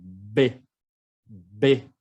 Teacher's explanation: El B es más explosivo. Mis labios como explotan.